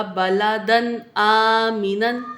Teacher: تنوین کے بعد حروف حلقی میں سے حرف، تو اظہار ہوگا